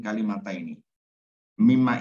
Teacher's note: Nah, jadi syarat idgham ya berarti disamakan ya. Jadi nunnya berganti menjadi mim, lalu double mim diidghamkan ya, dimasukkan. Mim yang pertama masuk ke mim yang kedua.